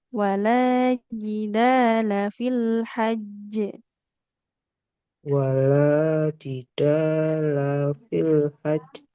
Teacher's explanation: Nah, lamnya enggak boleh panjang.